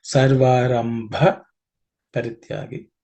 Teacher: Bha in this compound consonant. The second letter Bha is an aspirated one, so it has to be stressed a little bit.